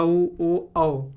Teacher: मुह हुक्का जैसे बन जाता पूरा गोल हो जाता है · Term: व्रत मुखी, व्रतमुखी